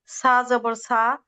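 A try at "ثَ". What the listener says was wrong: না, সাটা নরম এবং পাতলা উচ্চারণ হবে।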